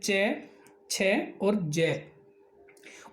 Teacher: जिनको बोलते समय हमारी जीभ है वो तालु को टकराती है, स्पर्श करती है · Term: तालव्य व्यंजन